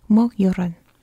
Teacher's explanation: Don't forget to roll that R ever so slightly.